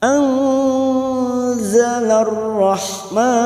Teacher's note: nun sukun bertemu zain ikhfa hakiki, ini juga yang disebut dengan ikhfa ausat kita samarkan bunyi nun sukun 3 harokat